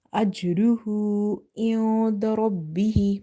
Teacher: Noon is having ikhfa here, that's why inda we can't read it clear. Ra is heavy because of having fatha on the top. · Okay, if it's at the end and it's sakina, then there will be strong qalqala. And ha, we are stretching the sound of the letter ha dhamma hu up to 2 counts, because this is inverted dhamma, and we know that vertical harkat are such that we read by stretching them up to 1 alif or 2 harkat.